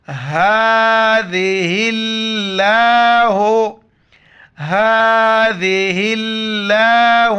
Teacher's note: ذال کے وقت زبان باہر نکالنا ہے۔ لفظ اللہ کے دوسرے لام کو ہا سے ملائیں گے، الف اور لام کو بیچ میں نہیں پڑھنا۔